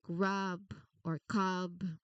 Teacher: even though the b is at the end, you still need to make sure you turn your voice on to create that buzzing sound.